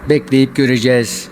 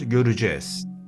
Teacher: Yani göre diyor beyefendi, o görü şeklinde söylenir. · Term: daralma